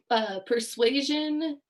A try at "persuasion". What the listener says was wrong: It sounded like you almost said perversion.